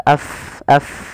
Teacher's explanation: huruf Fa itu makhrajnya di bibir tapi tidak rapat bibir kita · bertemu dengan huruf mim dan ba kemudian mfal nafsan fa fa pada lafal Fa Ini harus dialirkan nafas kita